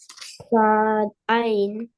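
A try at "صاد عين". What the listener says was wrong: Yeah, sad ain.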